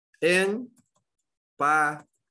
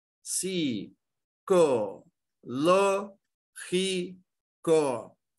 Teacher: Que todas elas, as três, elas têm um acento onde? Na antepenúltima. Então, todas são proparoxítonas